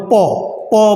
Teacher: প বললে ওষ্ঠ এবং অধরে কিন্তু স্পর্শ হয়, অর্থাৎ বাধা পায়